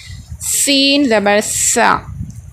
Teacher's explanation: सीन ज़बर सा, सीन और सा में बहुत फ़र्क है, सा को हल्के से अदा करेंगे, यानी ज़बान की नोक जो है सामने के दोनों दांतों के किनारे को लगाने से सा अदा होगा, थोड़ी ज़बान की नोक बाहर निकलेगी। और सीन जब हम अदा करेंगे तो थोड़ी सीटी की जैसी आवाज़ आएगी